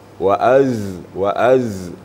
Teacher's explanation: itu bacaannya berbeda dengan huruf Zal waazwa jadi safirnya sedikit lagi sin sad Zai itu mempunyai sifat safir · huruf Zai sedikit lagi ketebalannya ya desisnya ya